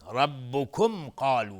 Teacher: ربکم، را استعلاس چون فتحه داره. ربکم قالو، میم ساکن بهش قاف اظهار شفوی